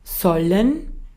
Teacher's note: el austríaco su acento pareciera que le da más fuerza a la segunda parte